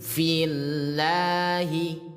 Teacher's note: Maka karena kasar bertemu lafaz Allah harus dibaca tipis atau tarkik ya menjadi fillahi